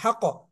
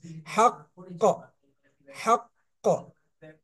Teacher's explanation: ذلك اليوم কলকলাটা একটু দেরিতে হবে, মানে সঙ্গে সঙ্গে এরকম না, এরকম বলবো না হাক, এরকম বলবো না হাক ক, কিছুক্ষণ ধরে রাখবো, 1 সেকেন্ড ধরে রেখে তারপরে সাউন্ডটা, কলকলা সাউন্ডটা বের করবো। হাক ক, হাক ক, ঠিক আছে।